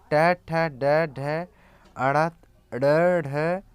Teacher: मूर्धन्य कठोर तालु के अगले भाग से